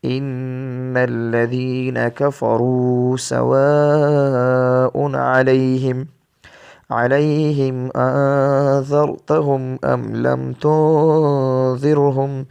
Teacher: آگے ہے ام لم تنذرہم، یہ بھی یہی ہے، نون ساکن کے بعد ذال آیا ہوا ہے تو یہاں پہ بھی ہم غنہ کر کے پڑھیں گے